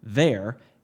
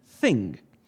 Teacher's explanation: The fact that th represents not one, but two sounds in English is not something that you may have consciously realized, but the pronunciation of th in there is not the same as that of the th in thing. The first is voiced, which means the vocal chords are engaged in the production of the sound, and the second is voiceless, which means the vocal chords are not engaged in the production of the sound. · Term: voiced dental fricative